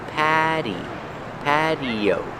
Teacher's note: The T is pronounced with a fast D.